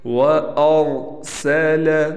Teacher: را کو پر پڑھیں گے، یعنی را کو موٹا پڑھیں گے، یہاں را گرین ہے، ہرا کلر میں لکھا گیا ہے۔